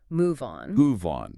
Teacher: we link the consonant V to the vowel O. It sounds like move on. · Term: phonetic linking